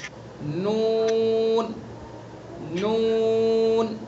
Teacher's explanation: میم دونوں ہونٹوں کی خشکی کا حصہ. نون زبان کا کنارہ ایک ناب سے لے کر دوسرے ناب تک اور اوپر کے دانتوں کے مسوڑے